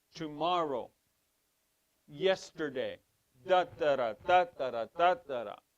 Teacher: the accent in Ashkenaz, the accent goes at the front of the word.